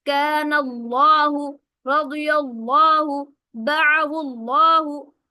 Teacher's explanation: لفظ اللہ یا اللہم کے لام سے پہلے زبر یا پیش آ جائے تو اس لام کو خوب اچھی طرح موٹا پڑھیں گے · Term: تغلیظ